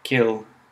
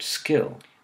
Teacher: The same puff of air doesn't occur when the K sound follows an S sound, so we wouldn't have to write it in a phonetic transcription of the word skill.